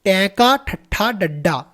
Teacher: ਸਾਡੀ ਜੀਭ ਉੱਪਰ ਲੱਗਦੀ ਆ ਇਹ ਨੀ ਉਲਟ ਜੀਭੀ ਸਾਡੀ ਜੀਭ ਘੁੰਮ ਰਹੀ ਆ